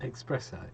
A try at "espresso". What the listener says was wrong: No, espresso. Espresso. There's no X in it. It's E-double-S.